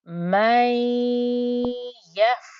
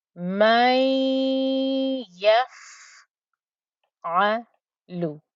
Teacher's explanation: So what did I do? I joined up to the ya that had the fatha, and before I pronounced the fatha on the ya, I made sure I held the ghunna.